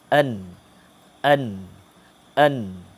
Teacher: Keluar angin daripada hidung dan mulut. Dan dia berdengung. Huruf nun ni dia berdengung. · Kita akan dah rasa bunyi ada angin keluar sikit ikut hidung kan? An. Itu kedudukan tepi hujung lidah yang kita kenakan kepada ataupun kita tekan pada gusi gigi depan.